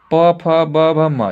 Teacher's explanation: पांचवा रो में प भ म ये सब सब ओष्ठ से उच्चारण होता है